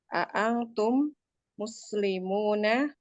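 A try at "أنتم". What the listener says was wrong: Antum. Jangan diikhfakan Umi. Antum. Jelas. diikhfakan tuh kalau kita tajwid aja, belajar Quran.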